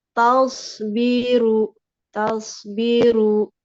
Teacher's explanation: Soundnya sudah bagus, tapi ru-nya ada hamzahnya ya.